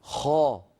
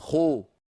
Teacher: والشفتين لا تعملان، لا نقول خو خا قا صا، ولا نقول صو، لا نستعمل الشفتين من أجل التفخيم، وإنما نبقيهما بوضعهما الصحيح.